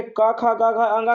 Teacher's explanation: क ख ग घ अंगा का किससे उच्चारण होता है, तो कंठ से होता है।